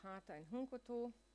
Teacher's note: they're underlyingly consonant final and then get realized with an echo vowel